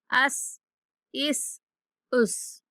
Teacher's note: سین بھی حروف صفیریہ میں سے ہے، تو سختی کے ساتھ سیٹی جیسی آواز کے ساتھ اس کو ادا کریں گے۔